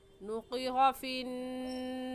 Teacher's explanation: ज़बान के आखिरी हिस्से को जो कव्वे के पास है, उस आखिरी हिस्से को ऊपर तालू यानी हलक में जब लगाएंगे तो क्या निकलेगा, क़ाफ। तो इसको ऐसे पढ़ेंगे नुक़िर फ़िन्नाक़ूर, क़ाफ की जगह काफ पढ़ना गलत हो जाएगा।